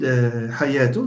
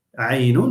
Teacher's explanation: Aynun starts with a pharyngeal, and hayatun starts with a pharyngeal. The difference between h and a is that h is voiceless and a is voiced.